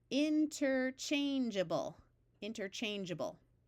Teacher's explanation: while this word by itself is able, as a suffix, the A schwas, and it's pronounced more like ubble or ibble.